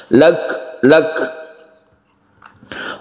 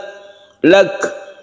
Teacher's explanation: Cara membacanya itu mahmus atau hamas. Kaf ini kita sukun, kemudian kita hembuskan nafas sedikit. Bukan kolkolah, bukan memantul, tapi hamas.